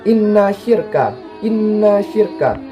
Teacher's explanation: ada huruf nun yang bertasydid jadi cara membacanya itu mendengung tetapi singkat tidak tebal yang mendukung tipis jadi Inna syirka Inna syirka lalu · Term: ghunnah musyaddah, gunnah musyadah